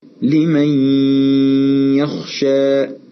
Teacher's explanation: نلاحظ في المثال الأول أن إدغام النون الساكنة في الياء كان مصحوبا بغنة